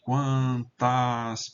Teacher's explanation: Aqui esse A vai ser longo, porque veja, depois tem duas consoantes.